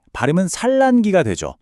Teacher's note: 글자는 산란기인데 발음은 산란기가 되죠. 받침 니은이 뒤에 오는 리을을 만나니까 자기도 그 부드러운 리을 소리를 따라서 스르륵 바뀌어버리는 현상이에요. 이걸 유음화, 그러니까 흐를 유자를 써서 흐르는 소리가 된다는 뜻의 규칙이라고 부릅니다.